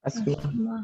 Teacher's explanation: We will pronounce it as asthma. Here, TH is silent.